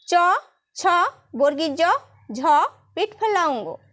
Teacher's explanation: এই ব্যঞ্জন ধ্বনিগুলি উচ্চারণের সময় জীভের মধ্যভাগ তালু স্পর্শ করে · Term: তালব্য ধ্বনি